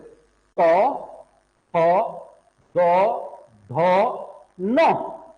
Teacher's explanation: सब का उच्चारण दांत से हो रहा है देखो त बोलने में जी कहा लग रही है दांत में